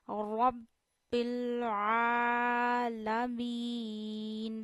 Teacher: आईन प खड़ा जबर होने की वजह से वन फिंगर जितना आईन को खींचना है · اور رب بل، را کو موٹا کریے، رب بل، آئین بھی گلے کے درمیان سے ادا ہوتا ہے، یعنی تھوڑا سا منہ اوپر کریے، گلے کی ہڈی شروع ہو رہی ہے، جہاں سے گلے کی ہڈی شروع ہو رہی ہے وہاں سے آپ کو آئین ادا کرنا ہے، اور آپ کو آئین پہ کھڑا زبر ہونے کی وجہ سے 1 فنگر جتنا آئین کو کھینچنا ہے۔